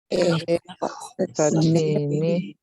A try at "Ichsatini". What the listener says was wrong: Yeah.